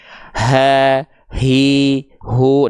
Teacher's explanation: H besar dilafalkan dari pangkal tenggorokan. Karakter nafas yang mengalirnya adalah biasa.